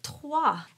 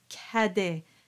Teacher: sound is a closed ah sound that follows the W so the word TWA is pronounced slightly darker than how you would pronounce Cade